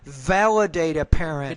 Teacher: you got to put more vibration on the V.